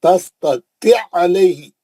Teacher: एक ही आइन से, मुशद्दद आइन से पढ़ेंगे खाली